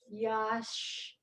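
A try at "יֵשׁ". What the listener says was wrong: Not ya. There's one dot. E. Yeesh. Ye.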